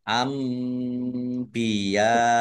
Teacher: nun sukun bertemu dengan huruf ba bacaan itlab dibaca membalik ya nunnya dibaca mim dulu ditandai ada mim kecil ambiya ya